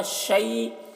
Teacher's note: جب یہاں پر وقف کرتے ہیں تو حمزہ کی جو دو زیر کی تنوین ہے وہ سکون سے بدل جاتا ہے، اور اس سکون کو سکون عارضی کہتے ہیں۔